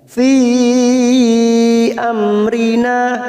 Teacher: ada Mad yang bertemu dengan Hamzah di lain kalimat Mad Jaiz munfasil empat harakat kita panjangkan